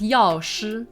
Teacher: has that sh with the retroflex